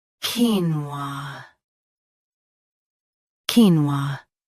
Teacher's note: Both US and UK have the same pronunciation of this word. Stress keen first. Keep wa soft and smooth.